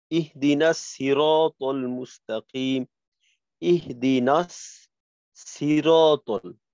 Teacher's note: এইখানে কিন্তু মোটেও সদের উচ্চারণ হইল না, পরিপূর্ণভাবে সিনের উচ্চারণ হয়ে গেল